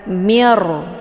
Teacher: Cara bacanya, nunnya dileburkan ke dalam huruf ra dengan cara ditekan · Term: idgham bila gunnah